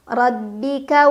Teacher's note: ro dibaca secara tafkhim karena ro berbaris Fath ha jadi bacanya tebal